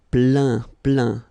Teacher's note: Remember this E-I-N nasal. So it goes in your nose